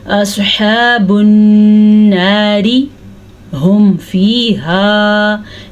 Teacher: अगर आप यहाँ पे रुकते नहीं हैं तो इस रॉ को बारीक पढ़ेंगे ऑफ कोर्स, क्योंकि इसके नीचे रॉ ज़ेर है।